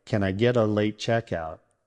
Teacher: Get and a blend into getta.